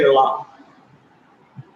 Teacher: When you say la, what happens to your tongue when you say la? it gets curled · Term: retroflex action